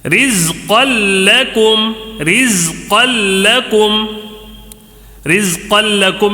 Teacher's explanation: رزقا لکم میں تنوین نظر آ رہا ہے دو زبر کی، اس کے بعد لام آیا ہے تو ادغام ہوگا، ادغام بلا غنہ ہوگا، غنہ نہیں ہوگا، ٹھیک ہے۔